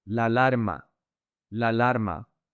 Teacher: Pay attention with the connection. The two A's connect. And there are 4 A's here.